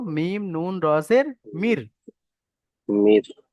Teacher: উচ্চ করে দিচ্ছি, অর্থাৎ নুনটাকে আমরা উচ্চারণের মধ্যে আনবোই না